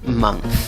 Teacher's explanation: Se escribe con O, pero la pronunciación es con schwa, la vocal que no es ni A, ni E, ni O, neutra.